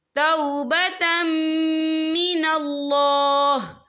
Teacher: وقف کی صورت میں ہا جو ہے ساکن ہو جائے گا